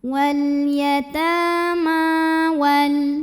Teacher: Ma mad tabi'i muqaddar karena ada baris fathah tegak di atas huruf mim. Cara bacanya dipanjangkan mimnya 2 harokat.